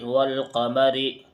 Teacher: الف اور لام دونوں ہیں لیکن الف کو نہیں پڑھا جا رہا بلکہ لام کو پڑھا جا رہا ہے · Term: حروف قمری